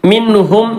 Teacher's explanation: സുക്കൂണിന്റെ നൂനിന്റെ ശേഷം ഹ വന്നത് കൊണ്ട് മിൻ എന്ന് വ്യക്തമാക്കി പറഞ്ഞു